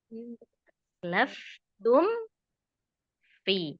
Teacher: Nah, mingkam dulu ya. Mingkem dulu sempurnakan ghunahnya kemudian baru ke pi. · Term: izhar syafawi